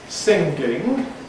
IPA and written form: ˈsɪŋgɪŋg (singing)